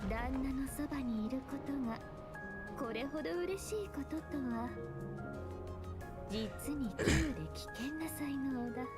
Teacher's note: She uses a very breathy voice.